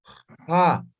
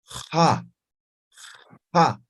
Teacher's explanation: Pronuncian, articulen como la J, pero al momento de pronunciar raspen, ¿no? Fricativa.